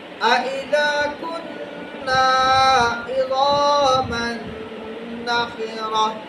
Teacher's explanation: نون مشدد اور میم مشدد، اس پہ ہر حالت میں غنہ ہوگا